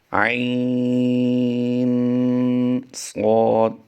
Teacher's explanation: عین پڑھنے کے ساتھ ہی ہم نے عین کے آخر میں غنہ کیا ہے